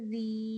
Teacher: یہاں باریک پڑھے گے کیونکہ رو کے نیچے کسرہ ہے